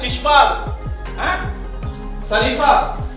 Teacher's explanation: तो श इसमें कहां पे जाता है, तालु पे जाती है जीभ